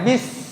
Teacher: Sin itu adalah huruf hams, dan ini ketika mengucapkannya harus terdengar desisan.